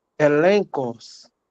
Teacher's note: Esse gama se tornou N na pronúncia e também na transliteração